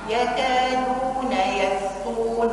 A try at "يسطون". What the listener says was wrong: أي السين عندك فيها مشكلة. يس أس.